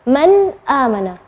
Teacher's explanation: nun sukun ketemu dengan hamzah, maka bacanya nunnya yang jelas